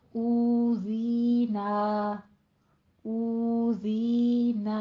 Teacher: ناک میں آواز نہیں رہ کے جانی، نا کہنا ہے